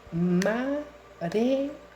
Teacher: No puede ser reo una sola sílaba, porque hay dos vocales abiertas en esa palabra que me obligan a notar la presencia del hiato y a separarlas en sílabas diferentes